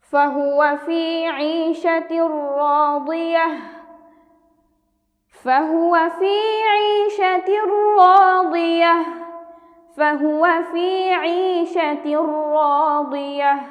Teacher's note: এখানে আমরা দেখতে পাচ্ছি যে তানভিনের বামে র অর্থাৎ ঈদগামে বেড়া গুন্না, দুই হরফের একটি হরফ এসেছে তানভিনের পরে, এই কারণে আমরা এখানে গুন্না ছাড়া মিলিয়ে পড়ব